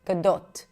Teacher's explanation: This is why most people pronounce it as gdo, but in Hebrew it's a pure o. So it's kind of like the beginning of o, but then you stop right after the beginning. It's like it's also super short. Gdote. And then the t in English, it's a hell t, which means there is no t there.